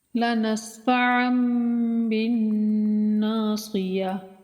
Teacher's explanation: ناصیہ، اس کے آخر میں گول تا جو ہے یہ وقت کی حالت میں ہمیشہ ہا ساکن پڑھی جاتی ہے، یعنی کہ اس گول تا کے اوپر جب ہم وقت کرتے ہیں، سانس چھوڑتے ہیں، رکتے ہیں تو اس کو ہا پڑھتے ہیں۔